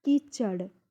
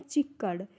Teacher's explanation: व्यंजन विपर्य, क्योंकि व्यंजन ने परस्पर स्थान चेंज कर लिया। जैसे च का स्थान च क की जगह चला गया, और क जो है ये च का स्थान ले लिया।